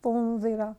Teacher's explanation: نون سکون کے بعد زال ہے تو ہم اخفا کریں گے